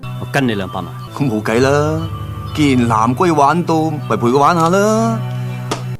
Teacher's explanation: I think most people will feel the Cantonese sounds way more sing songy way more tonal and you would be right because modern Cantonese has six basic